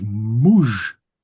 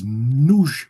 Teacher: in front of a labial vowel, there's a tendency for an M, the labial, to become an N in some dialects. So the pronoun for the second person, the personal pronoun for the second person plural, for example, is muj in southern Avar, but it's nuj with an N in northern Avar.